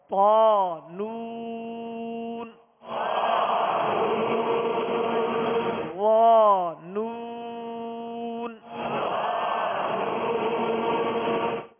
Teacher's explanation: طا اور وا دونوں کو ادا کرتے ہوئے ہونٹ گول نہ ہو، منہ کھول کر ادا کریں گے